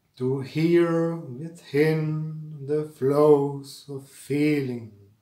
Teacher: It begins with an unstressed syllable and rises to a stressed one. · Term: iambic rhythm